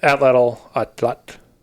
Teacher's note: So that final TL is a T sound which you make by it's kind of like how you say a T but instead of using the tip of your tongue, you're using the sides of your tongue